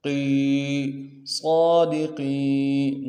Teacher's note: قاف کو یا کے ساتھ ملانا ہے، یا مدہ ایک الف دال میں کھینچیں گے، قاف کو موٹا کریں گے